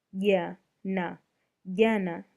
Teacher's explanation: J by itself sounds like Y to the untrained ear because of tongue positioning